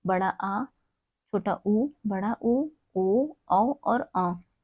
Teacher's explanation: जैसे कि हमने अग्र स्वर में देखा था ई, ए, मध्य स्वर में देखा था अ, और पश्च स्वर में देखा था बड़ा आ, छोटा ऊ, बड़ा ऊ, ओ, औ और अ। ये हमारे पश्च स्वर है, यानी कि हमारे पीछे से इसकी ध्वनि आ रही है जीवा के।